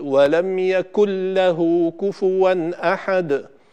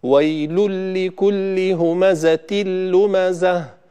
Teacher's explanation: يكن له النون ساكنة وبعدها اللام، فتدخل النون دخولا كاملا في اللام ولا يبقى من أثرها أي شيء، فنشدد اللام بذلك فنقول: ولم يكن له كفوا أحد. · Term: إدغام بغير غنة